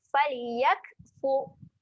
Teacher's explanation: Kita tengok ra mati sebelumnya ada baris hadapan. Jadi ra ni dibaca dengan tebal. Bila tebal kita kena muncungkan sikit mulut. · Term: ra yang tebal